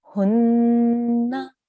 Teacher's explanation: We need to make a sustained nasal sound here. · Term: nun gunna